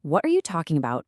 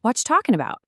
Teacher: In casual everyday speech, what are you? drops some letters and completely blends into watcha.